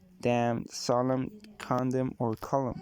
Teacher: simply functions to soften the words final vowel sound a little the n is silenced within the mouth but it makes these words simply longer than if they just ended in m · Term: silent end